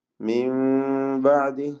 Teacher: സാക്കിന നൂൻ ഇഖ്ലാബ് ചെയ്ത് സാക്കിന മീമിന്റെ ശബ്ദം നൽകി മാറ്റി മണിച്ചുകൊണ്ട് ഓതുകയും വേണം